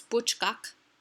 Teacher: the buch is emphasized or stressed because it's a monosyllabic foot